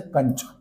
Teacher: अनुस्वार, इनमें हवा केवल नाक से निकलती है।